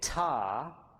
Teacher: when you say ta, there's a moment t where uh you aspirate and then the vowel comes next